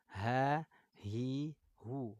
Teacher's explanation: Makhraj huruf H dari mana? Tenggorokan bawah ya, di pita suara.